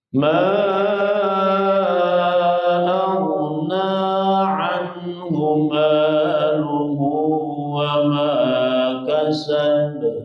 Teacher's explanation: Ghin itu adalah dari adnal khalqi, ujung kerongkongan.